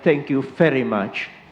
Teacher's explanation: the V is very much like F in this area of Netherlands